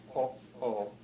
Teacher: it's like a little bit of no sound you hear between those vowels yeah yeah that's the glottal stop the globe will stop so